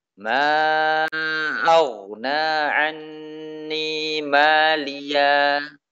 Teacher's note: Ini ketika waqaf. Suara ha diganti dengan suara alif.